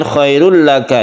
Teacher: ini idgham bilagunnah tidak berdengung